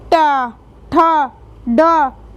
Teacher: हमारी जीभ पलट जाती है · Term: मूर्धन्य व्यंजन